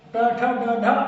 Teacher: कठोर तालु के अगले भाग से जब जीभ स्पर्श करती है तो वो मूर्धन्य कहलाता है